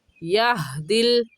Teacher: یہدی میں ہا، حلق کا آخر جو سینے کی طرف ہے وہاں سے ہا نکلتا ہے